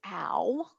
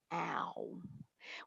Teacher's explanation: when i begin the sound of ow my lips are open and quite relaxed and they then seamlessly glide closed into a puckered position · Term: gliding motion